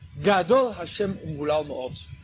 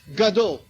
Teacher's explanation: Le gimel se prononce au plus haut de la bouche.